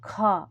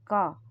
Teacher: तो ख में हवा ज्यादा निकली तो यह महाप्राण हुआ क अल्पप्राण हुआ